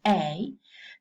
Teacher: the tongue moves from the position of the dress towards the position of the kit. A. So the kit is slightly sounded.